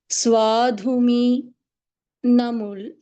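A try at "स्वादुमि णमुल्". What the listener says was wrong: Swadumi. There is no Mahaprana there. Swadumi.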